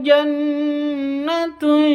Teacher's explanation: Nun tasydidnya berdiri sendiri artinya dibaca ghunah cara bacanya dibaca dengung dua ketuk